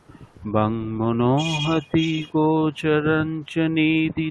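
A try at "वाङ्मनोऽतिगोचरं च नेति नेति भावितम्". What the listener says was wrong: মনোহতি নেই, ঠিক আছে। বাং মনোতি। না হতি নেই, হকার নেই ওখানে। বাং মনোতি।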